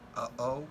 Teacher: Which is voiceless glottal stop, as in uh-oh.